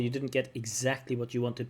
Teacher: putting the stress on exactly